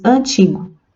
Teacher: as letras A e N também são pronunciadas com um som nasal, um som único, né? Nós não chegamos a pronunciar a letra N.